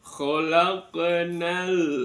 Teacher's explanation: ada qof sukun terletak di tengah-tengah kalimah dibaca qolqala sugro tipis kecil